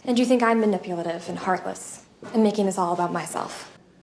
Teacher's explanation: Usually when we say two things and connect with end, we reduce this end sound to N, like the letter N.